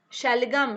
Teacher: शलगम बोलने में अगर आप उच्चारण करेंगे, अभ्यास करेंगे तो देखिएगा, तो हमारा जब श बोल रहे हैं तो हमारी जो जीवा है वो तालु में ऊपर, जीभ जो है ऊपर टच कर रही है, तो उसको क्या बोलेंगे, तालव्य श।